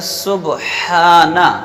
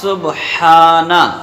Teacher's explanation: ہا جو ہے درمیان حلق سے ادا ہوتا ہے